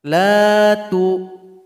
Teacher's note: nun tasydid kita sukunkan. Jadi tasydidkan lalu dengungkan dua harokat.